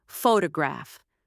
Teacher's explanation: in the word photograph, we stress the first syllable